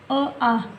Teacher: कंठे स्वर अ आ जो कंठ से उच्चारित होते हैं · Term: कंठीय स्वर